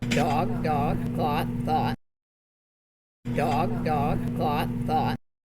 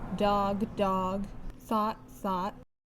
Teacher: So that speaker has the merger between the vowels.